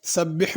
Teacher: سبح میں بڑی حا ہے، اس کو سبح نہیں پڑھنا۔